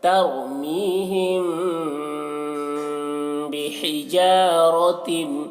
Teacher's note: मीम साकिन के बाद बा है तो यहाँ पर गुन्ना के साथ में पढ़ेंगे